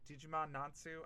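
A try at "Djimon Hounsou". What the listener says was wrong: No, it's Jimon Hansu. Yeah, Silent D, Jimon Jimon Hansu.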